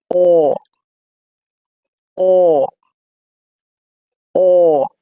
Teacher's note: the lips are rounded but less than উ, এখানে আমাদের উ যে ভাওয়াল ধ্বনি রয়েছে সেটির মতো নয়, এর চেয়ে কিছুটা কম। · the tongue is set at the back and in a low mid position, অর্থাৎ আমাদের জিহ্বার একদম পেছন থেকে অ ধ্বনিটি উচ্চারিত হবে।